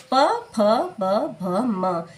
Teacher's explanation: जब हम इन पांचों वर्णों का उच्चारण करते हैं तो हमारे होंठ आपस में सटते हैं, इसलिए इसका उच्चारण स्थान होठ हो जाता है। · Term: प वर्ग